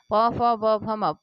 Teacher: प वर्ग आपका ओष्ठ से बोला जाता है।